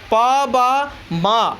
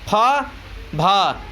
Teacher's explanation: यानी कम हवा निकलेगी मुख से तो अल्पप्राण होगा और अधिक हवा उत्पन्न होगी तो महाप्राण होता है।